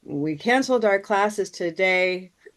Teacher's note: we have three counts, but we have four beats because we have a rest at the end. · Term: chant